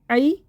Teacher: عین کو حلق سے نکال کے پڑھیں، ای، حلق کو بند کر کے کھولیں ، ای، جلدی، یا ساکن سے پہلے زبر ہے، یا لین